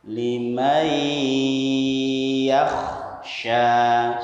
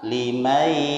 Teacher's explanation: suara nun sukun atau tanwin masuk pada huruf ya dibaca dengung selama 1,5 alif atau 3 harokat atau 3 hitungan atau 3 ketukan.